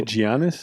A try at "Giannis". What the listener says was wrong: You pronounce everything phonetically when it's not supposed to be. It's Giannis.